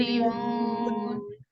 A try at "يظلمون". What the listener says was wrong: ज़ा के ऊपर आपने कलकला नहीं करना, यज़लिमून रॉन्ग है, ज़ा के ऊपर कलकला हो रहा है। यज़लिमून